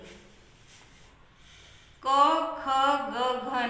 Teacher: क ख ग घ न ये गले से निकलते हैं, तो ये कंठ।